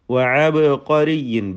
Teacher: ബാഇൻ്റെ സുക്കൂൻ ഖൽഖല നൽകി ശബ്ദം ചലിപ്പിച്ച് വ്യക്തമാക്കുക. വഅബ്ഖരിയിൻ എന്ന തൻവീനിനെ ഇൽഹാർ ഹൽക്കി നൽകി മണിക്കാതെ വെളിവാക്കുക.